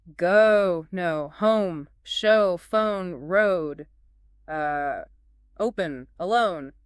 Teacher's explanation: I think the recommended action is starting with a nice roundo shape with your lips and then actively moving them towards that tighter ooh shape. You should really feel your lips changing position, pursing a bit at the end. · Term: O sound